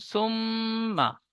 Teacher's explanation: মিমের উপরে তাজদিদ এসেছে, মিম তাজদিদ গুন্না করা ওয়াজিব, নাকে তুলে একালি পরিমাণ গুন্না করে পড়তে হয়। মিমের উপরে জাবার এসেছে, জাবারটি হারাকাত, হারাকাত তাড়াতাড়ি পড়তে হয়, টান দেওয়া নিষেধ।